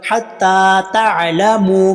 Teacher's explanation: حتی کے تا کو لمبا کریں گے، تا کے اوپر کھڑی زبر ہے۔ حتی تعلموا، میم کے اوپر لمبا کریں گے، میم کے اوپر پیش آگے واو۔